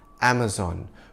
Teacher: the American pronunciation of the name, Am-uh-zon, where zon rhymes with dawn. Now before there was Am-uh-zon, the company, there was Amazon, the rainforest, and the mythical female warriors, the Amazons.